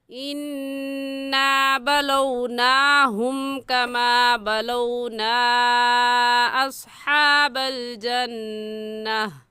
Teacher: اصحاب الجنتا میں بھی جنتی میں بھی نون مشدد ہے اور نون مشدد پر ہمیشہ غنہ ہوتا ہے تو یہاں بھی غنہ کر کے پڑھیں گے اور آیت ایسے پڑھی جائے گی اِنَّا بَلَوْنَاهُمْ كَمَا بَلَوْنَا أَصْحَابَ الْجَنَّةِ.